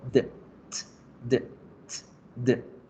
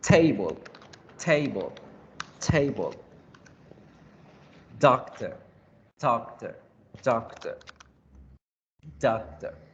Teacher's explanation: La punta de la lengua toca los alveolos y es ahí donde ocurre la creación del sonido. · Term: sonidos alveolares